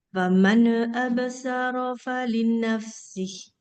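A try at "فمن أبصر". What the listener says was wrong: Faman absara, jangan faman jangan ada n-nya itu. Faman jangan gitu. Faman absara.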